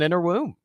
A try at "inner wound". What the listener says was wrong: It sounded like you said inner womb.